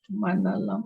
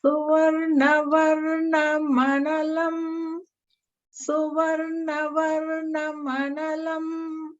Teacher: So technically it's like varnam analam, but because the two words are next to each other, we link them together like varna manalam